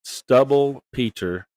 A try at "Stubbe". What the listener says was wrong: Stub. There's no L. Stubby, Stubbe.